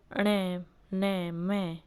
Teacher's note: ये जो नासिके वर्ण होते हैं, ण, न, म, इनका जो स्थान होता है वह होता है नासिका